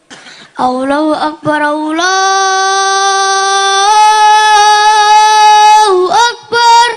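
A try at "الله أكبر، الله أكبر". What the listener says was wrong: Tambah alon kaya ngadani mayat no kuburan. Adzan sing semangat banter kae.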